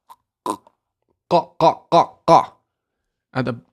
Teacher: The qa is at the top of the throat here, just behind the kaf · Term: qaf